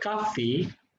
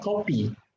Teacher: it occurs between the two close places of articulation such as labiodental sound is pronounced as bilabial for example there is one respondent who pronounced the word kaffi